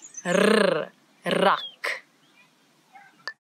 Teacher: it's a rrr, as if your tongue is jumping up and down in your mouth